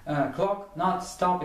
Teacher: читается как веселенький такой, на выдохе, легкий звук О. То есть, похоже на русский О, но где-то с одновременным отзвуком русского А. · похоже на русский О, но где-то с одновременным отзвуком русского А. То есть, О, на выдохе, да?